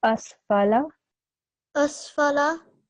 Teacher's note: The fatha sound should be equally long. The fatha, kasra and dhamma sounds should be equally long, and that is for 1 second. · we have to make sure this fa is not prolonged